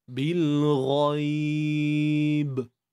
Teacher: Bila kita waqaf pada ba ni, dia ada qalqalah kubra. Kan? Kita kena datangkanlah sifat lantunan tu.